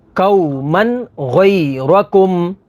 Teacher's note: تنوین کے بعد غین ہے، غین حروف حلقی میں سے ہے، تو یہاں پر اظہار ہوگا یعنی غنہ نہیں کریں گے